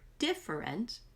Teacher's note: The word different is a 3-syllable word, but the most important syllable is the first syllable. That's where you have to put the emphasis to stretch it out, and it has an underline to show you that.